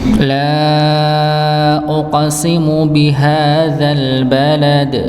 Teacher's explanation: mad tabi'i atau mad asli atau yang biasa kita baca 2 harakat, ya, maka dibaca dengan dua harakat